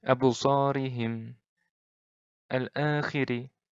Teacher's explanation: Ri-nya ini pendek. Ri-nya ini tipis. Ri-nya tipis. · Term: ro' tarkik